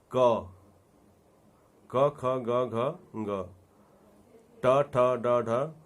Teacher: इन ध्वनियों के उच्चारण के समय हमारे मुख के अंदर कोई न कोई अंग एक दूसरे के साथ स्पर्श जरूर करते हैं, इसलिए इनको स्पर्श से ध्वनि कहा गया है।